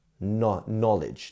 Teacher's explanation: So knowledge has a K and N, which often is pronounced as an N. It's not a Kn, it's just a N. Knowledge. And as you can see here, we have a W as well.